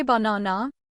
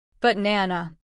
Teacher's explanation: We stress the middle. The other two become schwas.